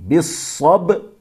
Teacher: وتواصوا، یہاں بھی وتا نہیں ہے، تا کے اوپر تشدید نہیں ہے، وتواصوا، سونی صاد ہے موٹا پڑھیں گے، وتواصوا بالصبر، صبر نہیں ہے، با کے اوپر جزم ہے، صبر، بالصبر، با کو جو ہے وہ قلقلہ کریں گے، اس میں آواز ٹکر کھا کے الگ ہوگی، بالصبر، یعنی را بھی ساکن کریں گے، را کے نیچے زیر نہیں پڑھیں گے، اصل میں بالصبری، لیکن رکیں گے تو پڑھیں گے بالصبر، بالصبر۔